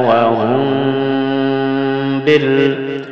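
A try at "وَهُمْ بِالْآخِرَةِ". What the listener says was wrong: ini ditahan, ikhfa syafawi, jelas ya suaranya, bukan wahum tapi samar ke ba,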